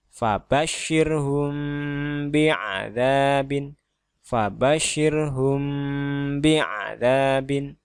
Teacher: di sini terdapat mim mati yang kemudian huruf berikutnya adalah ba, maka dia harus dibaca secara samar dan berdengung. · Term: ikhfa syafawi